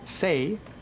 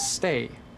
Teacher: The difference between say and stay is actually a little pause right when the T happens.